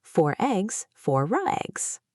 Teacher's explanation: if the next word starts with a vowel, the r comes back to life. It acts as a bridge. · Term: Linking R